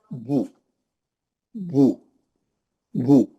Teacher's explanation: پیش کا آواز فارورڈ جاتا ہے، نہ اوپر جاتا نہ نیچے جاتا. اوپر زبر کا جاتا، نیچے زیر کا.